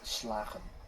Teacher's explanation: the G is not as intense as it would normally be